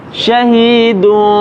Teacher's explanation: mengganti huruf nun mati atau tanwin, diganti nun atau tanwin itu menjadi huruf mim ma'al mukhfa sautul mim, dengan menyamarkan bunyi huruf mim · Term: iklab